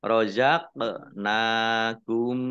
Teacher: qaf sukun bacaan kolkolah atau memantul ditampakkan pantulannya.